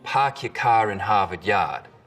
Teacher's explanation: the start vowel in boston it's usually pretty fronted